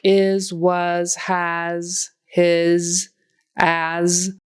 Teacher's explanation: an S spelled with an S but it's a z so make sure that s is voiced you know there's vibration going on here